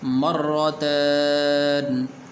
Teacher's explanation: را کے اوپر شد بھی ہے اور را کے اوپر زبر ہے، تو اس لیے را کو پر کر کے پڑھیں گے